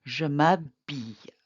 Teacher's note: In front of a vowel, the me, te, and se are contracted. So, and s'habiller, the H is not pronounced, so it acts like a vowel. So this would be je m'habille, I get dressed.